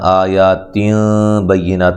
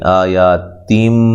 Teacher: واضح طور پہ نون کو میم سے بدل دینا ہے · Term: اقلاب مع الغنہ